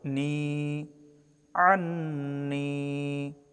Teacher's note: আন্নি, নুন অক্ষরে ওয়াজিব গুন্নাহ এবং এক আলিফ টানতে হবে